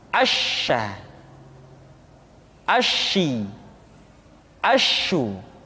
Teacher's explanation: Dan sifat yang dimiliki oleh huruf sya yang paling nampak adalah apa yang disebut dengan sifat at-tafashi, yaitu menyebarnya angin di dalam mulut kita